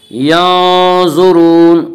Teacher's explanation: ज़ा को पुर पढ़ेंगे। ज़ा हुरूफ़ मुस्तालिया में से है। حروف مستعلیہ 7 ہیں جن کا مجموعہ خصہ ضغط نقض ہے جو ہمیشہ ہر حال میں پر پڑے جاتے ہیں۔